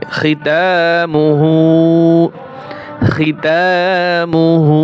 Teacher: হা উল্টা পেশ হু এক আলিফ টান হবে